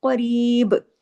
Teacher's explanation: قاف کو ہیوی کرنا ہے، با پہ کلکلہ کرنا ہے